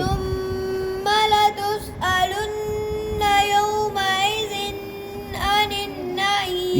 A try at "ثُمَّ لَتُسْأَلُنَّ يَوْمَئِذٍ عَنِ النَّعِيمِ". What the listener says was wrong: یومئذن پہ غنّہ نہیں عانن پہ ہے جی